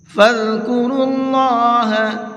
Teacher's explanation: اللہ کے لام کو منہ بھر کے پڑھیں گے، اس لیے کہ اللہ کے لام سے پہلے پیش ہے